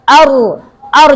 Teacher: A-nya tuh biasa. A, I, U, A. Ro-nya yang tebal. Ar, jangan or.